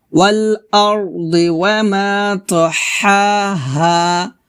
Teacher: প্রথম হাটা চিকন করে গলার মাঝখান থেকে চাপ দিয়ে বলতে হবে, দ্বিতীয় হাটা পাতলা করে নরমাল ভাবে বলতে হবে। ওয়াল আরদি ওয়ামা তাহাহা, এভাবে।